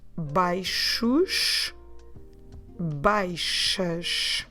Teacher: This happens because we have the x, we're pronouncing x like a sh, and then the s at the end is also the sound sh. So you get baixos, baixas. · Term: sh sounds